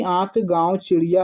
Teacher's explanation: अनुनासिक के उच्चारण में नाक से बहुत कम सांस निकलती है और मुख से अधिक